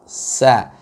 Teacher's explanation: Sin itu keluar dari ujung lidah dengan gigi seri kita yang bawah di pertengahan, ya, antara ke bawah dengan atas. Sa, maka dia sifatnya agak istifal. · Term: huruf sin